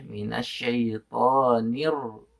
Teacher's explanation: maaf nih takriran Itu syaddu jadi dicukupkan saja tak relnya atau getarannya cukup satu getaran saja